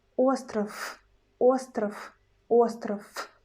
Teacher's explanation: where we got V in the end of the word, we pronounce not sound V, but its voiceless pair F